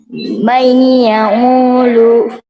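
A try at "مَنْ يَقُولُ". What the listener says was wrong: Ya, ini qaf lah. Jelas lah itu qaf. May yaqulu, bukan.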